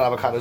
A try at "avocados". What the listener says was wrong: You put the emphasis on the wrong syllable.